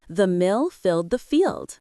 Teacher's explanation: The short I in mill and filled must be relaxed, while the long E in field must use the smile.